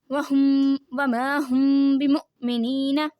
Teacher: حمزہ یہاں پہ حمزہ ساکنہ ہو رہا ہے تو ہم جھٹکا دیں گے